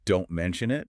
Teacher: If you say don't mention it with a hard stress on don't, it sounds aggressive, like a warning